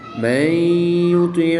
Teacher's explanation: پہلا حرف متحرک، دوسرا حرف ساکن اور تیسرا حرف مشدد ہے، تو متحرک حرف کو مشدد حرف کے ساتھ ملائیں گے، نون ساکن کو مشدد حرف میں مدغم یعنی شامل کر کے پڑھیں گے. یہاں پر نون ساکن کے بعد یا حروف یرمالون میں سے دوسرے کلمے میں ہے، تو یہاں پر ادغام مع الغنہ ہوگا یعنی غنہ کر کے پڑھیں گے.